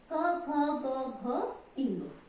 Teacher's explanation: इनको जब हम उच्चारण करते हैं तो आप ध्यान से बोल के देखिए, कंठ की सहायता से बोलते हैं, इसलिए ये कंठय कहलाते हैं। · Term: कंठय वर्ण